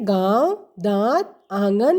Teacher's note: अनुनासिक ऐसे स्वरों का उच्चारण नाक और मुंह से होता है